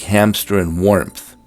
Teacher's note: Many English speakers introduce a P into words like hamster and warmth